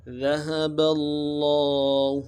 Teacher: لفظ اللہ کے لام کے ساتھ تشدید ہے زور دیں گے، لفظ اللہ کے لام کو موٹا پڑھیں گے اور ایک الف دار میں کھینچے پڑھیں گے